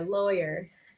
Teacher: It's a little harder R at the end there. Lawyer. I think the reason this is very difficult to pronounce in English for lots of students is because the noun law is kind of with the W, but lawyer, you miss out the W.